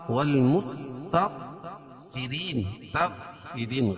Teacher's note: غین کو پور پڑھیں گے اور را باریک پڑی جائے گی